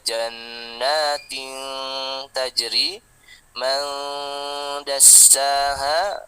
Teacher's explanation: Intinya harus dengung yang lama atau 3 harokat. Walaupun teorinya 2 harokat.